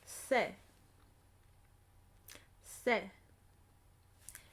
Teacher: the tip of my tongue is coming ever so slightly in contact with the back of my teeth. Se not sh. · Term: soft s